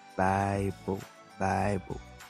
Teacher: This is a diphthong because it it's the mixture of the a vowel, and the I vowel. You see, it's pronounced like I.